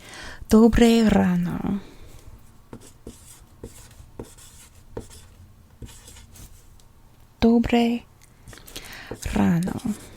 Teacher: you always roll those r's every single r